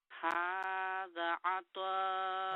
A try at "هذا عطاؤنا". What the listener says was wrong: Don't stretch the ain, sister.